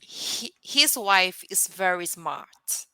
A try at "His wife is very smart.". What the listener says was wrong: Good job. Good job.